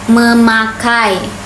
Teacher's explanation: bunyi n dari men ini bisa menyesuaikan dengan bunyi p setelahnya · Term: asimilasi